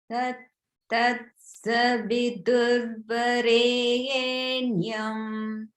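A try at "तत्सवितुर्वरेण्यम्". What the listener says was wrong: So look at the word savitur. The sa goes up, and then the V immediately goes to the down. Savitur, savitur. When you chanted, it sounded like savitur was all the middle note. So just note the swaras in savitur.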